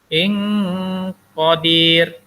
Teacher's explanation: Kemudian syai'in qa, ini adalah ikhfa hakiki. Tanwin bertemu dengan huruf qaf, maka dibaca sama-samar dan dengung.